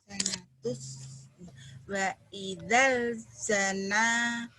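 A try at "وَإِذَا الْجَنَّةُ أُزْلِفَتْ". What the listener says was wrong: Bukan jana. Tapi nunnya 2.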